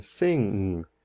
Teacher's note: this is near the back of your throat and the air is going to go through your nose again. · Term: velar sound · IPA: ŋ